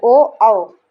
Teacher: ओ, औ, दोनों का उच्चारण स्थान कंठोष्ठ है। कंठ, इसमें कंठ और ओष्ठ दोनों का प्रयोग होता है।